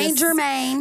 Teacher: you don't pronounce the T. So, it's just St.